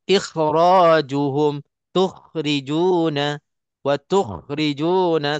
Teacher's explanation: Kalau tak ada sifat tu, sifat isti'la kha itu tidak sempurna. Kena keluar sampai ada bunyi seolah-olah kahak sikit. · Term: huruf kha